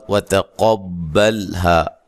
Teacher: تا کو باریک، قاف کو موٹا، لام کو ہلانا نہیں ہے